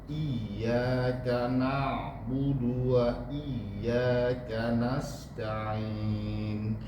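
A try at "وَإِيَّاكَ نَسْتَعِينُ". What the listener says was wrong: Kecilin lagi Pak. Nasta'in. Temukan gigi seri atas dengan gigi seri bawah.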